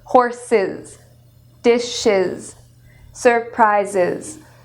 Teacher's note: So there's an added syllable with the /iz/.